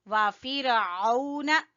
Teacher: وَفِرْعَوْنَ عین کو گلے کے درمیان سے